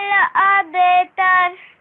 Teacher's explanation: you gave a jerking sound there at the ba, because you know ba is one of your qalqala letters, right? Yes.